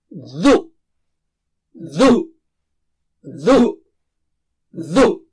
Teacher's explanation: زبان کی نوک کو سامنے کے اوپر کے دانتوں کی نوک سے لگانا ہے